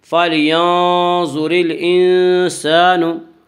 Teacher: را کے نیچے زیر آئے تو را کو باریک پڑھا جائے گا